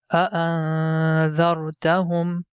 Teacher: While hiding the sound of Noon, tongue is not going to touch with mouth roof. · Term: hide the sound of Noon